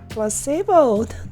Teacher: The stress is on the middle syllable.